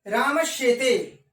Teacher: देखिए दोस्तों, इसको दंत्य सकार कहा जाता है और इसको तालव्य सकार कहा जाता है। तो दंत्य सकार के स्थान पर तालव्य सकार हो जाता है